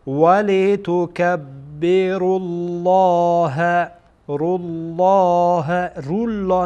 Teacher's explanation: را در واقع پیش داره و قبل از لام جلاله هست، بنابراین لام جلاله پر خوانده میشه